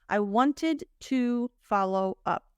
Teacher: instead of saying to, if you recall from the reductions masterclass, Americans usually say tuh.